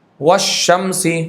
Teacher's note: دیکھیں کیسے ادغام ہوتا ہے، قل ربی، یہ ادغام متقارب ہے. والشمس، لام کا ادغام شین میں ہوا، قریب المخرج ہے، دیکھو لام شین اوپر نیچے ہے تھوڑا تھوڑا اس لیے.